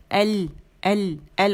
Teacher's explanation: अगर इसको हम हटा दें तो एल आवाज़ जो है थोड़ी सी चलेगी, इसमें तवस्सुत है